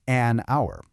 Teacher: It starts with the letter H, which is a consonant, but the H is silent. The first sound you hear is ow, which is a vowel sound. So we say an hour.